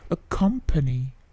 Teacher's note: P-nya sedikit plosive, tidak plosive yang terlalu besar, tetapi plosifnya ada ya.